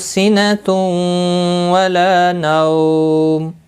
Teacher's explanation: تنوین کے بعد یرملون کا واو ادغام باغنہ ہوگا۔ · لا الف مدہ ہے، 1 الف کے برابر کھینچ کر پڑھیں گے، حمزہ ساکن کو جھٹکے کے ساتھ تھوڑا ادا کیا جائے گا۔ تأخذہ، ہا کے اوپر الٹا پیش ہے، 1 الف کے برابر کھینچ کر پڑھیں گے۔